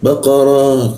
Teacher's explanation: mulutnya a tapi keluarnya o, posisinya di bawah hidung dia